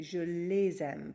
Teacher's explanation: If we want to say I love my parents and make that into I love them, j'aime mes parents, this time our direct object pronoun is les, and there's no vowel before a vowel, so we just keep it je les aime, but we pronounce the S, we make a liaison